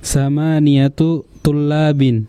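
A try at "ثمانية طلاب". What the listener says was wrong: Betul, samaniyatu tullabin.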